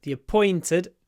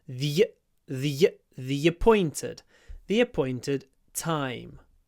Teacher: we connect the words and a y sound appears